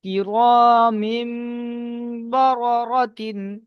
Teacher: তানবিন বা নুন সাকিনকে মিম দ্বারা পরিবর্তন করে এক আলিফ পরিমাণ গুণনা সহ পড়তে হবে। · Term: ইকলাব